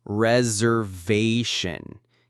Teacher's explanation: The S has more of a Z sound, and the main stress is on the ve.